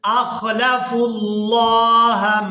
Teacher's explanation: فا کو لفظ اللہ کے نام کے ساتھ ملائیں گے